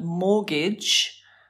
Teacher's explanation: It's spelt with a T, but the T is silent. So mortgage comes from French, which makes sense with the pronunciation.